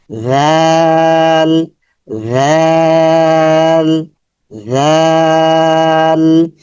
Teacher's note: রালের মাখরাজ হচ্ছে জিহ্বার আগা সামনের উপরে দাঁতের আগা, জিহ্বার আগা সামনের উপরে দাঁতের আগাতে স্পর্শ হবে, এবং নরম সাউন্ড হবে, নরম পাতলা সাউন্ড হবে।